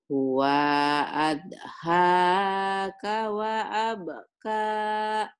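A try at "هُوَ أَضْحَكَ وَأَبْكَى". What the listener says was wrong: huwa adhaka wa abka. Gak ada yang panjang, Bu. Ujungnya doang yang panjang. Huwa adhaka. Huwa adhaka wa abka.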